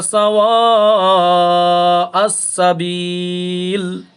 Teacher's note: এটা মাদ্দে মুত্তাসিল, চার আলিফ টান হবে